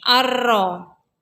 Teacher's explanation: Ayat ketiga, ar-ro, hukumnya samsiyah karena ada huruf alif dan lam bertemu dengan huruf ro. Cara bacanya dimasukkan ke huruf ro.